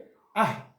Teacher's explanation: এটা হামজার পরে আসছে হা, উচ্চারণ হবে আহ। এই দুটি অক্ষর কণ্ঠনালীর প্রথম ভাগ থেকে হয়, যেটা বুকের দিকে আছে বা সিনার দিকে আছে। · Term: হামজা ও হা